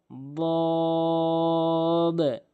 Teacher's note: দদ জিব্বার গোড়ার কিনারা উপরে মারির সঙ্গে লাগাবেন। দদ এভাবে উচ্চারণ করবেন।